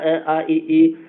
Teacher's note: और ये मतलब कि इसमें नासिका का प्रयोग बिल्कुल भी नहीं होगा। अ आ इ ई देखिए सिर्फ मुंह का प्रयोग हो रहा है। नासिका का प्रयोग बिल्कुल भी नहीं हो रहा है। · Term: निरनुनासिक